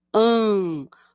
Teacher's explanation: Quando falamos hambúrguer, ouvimos primeiro as letras A e a letra M. Chamamos esse an de som nasal. Isso quer dizer que o som das letras A, M, ao serem faladas, o ar passa pelo nariz e pela boca. Por isso dizemos an.